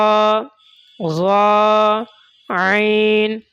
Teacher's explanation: बीच वाले हलक से ऐन निकालेंगे